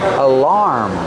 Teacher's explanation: Put the stress on the second syllable, making the R sound like bar and car.